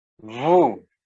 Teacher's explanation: when we speak, the final consonant S is not pronounced